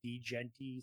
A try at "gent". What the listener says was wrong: The D is silent.